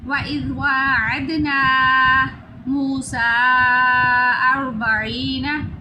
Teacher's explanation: آگے دال پھر سیٹی کی آواز نہیں آئے گی، واو کو ایک الف کے برابر لمبا کریں گے، سین کو 3 الف کے برابر لمبا کریں گے، اس کے اوپر مد ہے